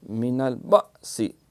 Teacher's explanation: حمزہ جب ساکن ہو تو یہاں اس میں ایک جھٹکا اور سختی ہوتی ہے